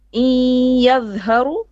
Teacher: The sound will come from the nose, from the noon part, not from the ya part. But because it merges, so you have 50% of ya and 50% of gunna from the nose. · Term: idgham bi gunna